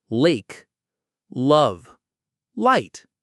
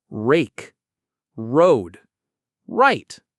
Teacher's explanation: For L, place the tongue behind the upper teeth. Lake, love, light. For R, pull the tongue back. Rake, road, write.